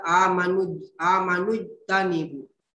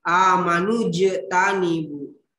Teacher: huruf jimnya di sini kalkalah. Jadi dipantulkan ya, tidak dibaca amanu tanibu, tapi dipantulkan amanu jetanibu ya.